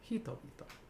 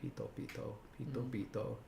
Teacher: the H in Japanese comes from older P. So it was originally pitobito, pitobito, hitobito.